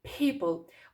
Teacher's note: На початку слова звук п у нас вибуховий. І ви ніби чуєте, що після звуку п іде звук х.